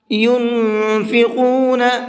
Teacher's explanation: نون کے اندر اخفا کریں گے، یعنی کہ آواز کو ناک میں چھپا کر کے پڑھیں گے